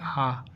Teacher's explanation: क्योंकि आ बोलने से हमारा मुंह पूरा खुल जाता है, ओपन हो जाता है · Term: विवृत स्वर